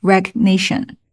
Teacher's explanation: 这个 g 后面跟了一个 nation， 所以 g 失爆